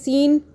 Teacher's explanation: یہ سین سیٹی کی آواز میں ہے سین، اور یہ جو سا ہے پیچھے والا یہ ہم نے سافٹ پڑھا سا۔